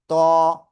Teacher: জিহ্বার আগা সামনের উপরে দুই দাঁতের গোড়ায় লাগিয়ে আমরা উচ্চারণ করব।